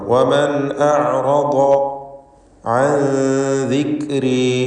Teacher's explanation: അൻ എന്നതിലെ സാക്കിനത്തായ നൂനിനെ ഇഖ്ഫാ ഹഖീഖി നൽകി മറച്ചു മണിച്ച് അവ്യക്തമാക്കി മണിക്കണം. ശേഷം ദാലാണ് ഇസ്തിഫാലിൻ്റെ ഹർഫ്, അതുകൊണ്ട് നൂനിൻ്റെ മണിക്കലിലും തർക്കീഖ് വേണം.